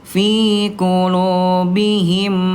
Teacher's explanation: kalau mim bertemu dengan mim maka dia dilebur dan ditahan